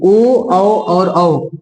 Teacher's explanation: हवा कंठ से भी टकरा रहा है और ओष्ठ के भी, ओठ का भी इसमें सहायता है। तो इसको हम लोग बोलते हैं ओष्ठ प्लस कंठ या कंठोष्ठ्य बोलते हैं, या ओष्ठ कंठ्य बोलते हैं, ओष्ठ कंठ्य भी बोल देते हैं।